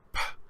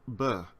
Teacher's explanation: instead of p, I can make the sound b, and now I'm using my voice box while I pronounce the letter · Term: voiced consonants